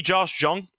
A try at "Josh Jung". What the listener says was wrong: I mean it's spelled jung. It's young. It's pronounced young.